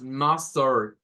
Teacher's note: Tenemos mustard, que en este caso es como como un schwa y una R.